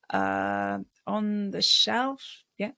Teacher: so we answer questions we're not sure about with a bit of vocal fry